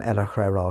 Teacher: Herrera should be pronounced with the second syllables less stressed and the two r's slightly rolled